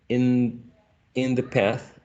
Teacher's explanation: the initial sound of the is interdental